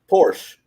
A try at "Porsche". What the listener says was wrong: No, it's Porsche. Pronounce the E. It's German.